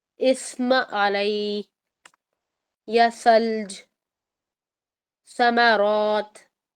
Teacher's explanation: ٹھیک ہے، اچھا جی، اب آپ دیکھیں کہ لیٹر ث میں ہمس کی آواز آئے گی، سین میں ہمس نہیں ہوتا۔ ث میں آپ کی آواز دانتوں کے درمیان لیفٹ اینڈ رائٹ جب آپ کی زبان ٹچ ہوتی ہے، وہاں سے ہوا آئے گی